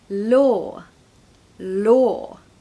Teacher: we need quite a bright L okay not a dark L we have to use our tongue to make that L law